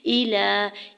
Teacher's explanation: الہ میں لام کے اوپر کھڑی زبر 2 حرکت کھینچ کے ادا کریں گے